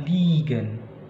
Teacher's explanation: IE tetap aja dibaca I, tapi lebih panjang. Ibaratnya I-nya itu dua gitu ya.